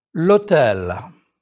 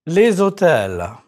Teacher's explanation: The H muet, the mute H is not pronounced, but you link it to the article as though it were a vowel. L'hôtel. With l'hôtel, you are making an elision.